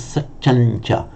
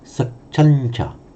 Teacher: So, satyang plus cha will, although it can correctly be written like that, it would be pronounced as satyancha because the final ng sound would automatically be pronounced in the same position, that palatal position, as the following consonant, satyancha.